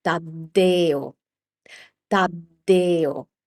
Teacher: the stress is placed on the e.